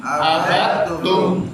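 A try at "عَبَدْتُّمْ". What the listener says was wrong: Nah, jangan parkir di dal. Jangan abadtum. Nah, tapi langsung diidghamkan abadtum.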